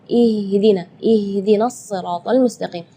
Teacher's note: Ya, itu tidak boleh, itu keluarnya dari dada. Sedangkan makhraj huruf H itu adalah dari tenggorokan. Jadi keluarnya tipis